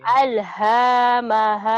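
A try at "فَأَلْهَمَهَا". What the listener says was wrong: Salah. Fa'alhamaha. Hanya pendek atuh.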